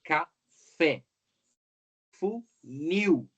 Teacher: a última sílaba forte no caso a gente tem ali né o acento recai na última sílaba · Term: oxítonas